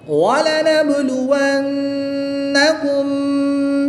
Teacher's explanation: نون مشدد میں غنہ کر کے پڑھیں گے